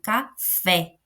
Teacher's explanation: Eu falo café. Fé é a nossa segunda sílaba e a nossa sílaba tônica, porque ele é a sílaba mais forte. · Quando eu falo a palavra café, eu coloco mais força na segunda sílaba